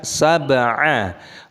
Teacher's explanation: baknya sukun qalqalah pantulkan suaranya.